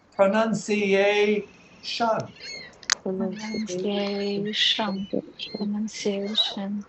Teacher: that last syllable spelled Tion sounds like shun. There's no S in there or no H. That T sounds like SH.